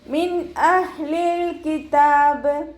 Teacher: നൂൻ സാക്കിനയെ വ്യക്തമാക്കി മണിക്കാതെ ഉച്ചരിച്ചു കൊടുക്കുക